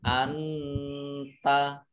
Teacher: nun sukun bertemu dengan huruf k bacaan Ikhfa dibaca samar-samar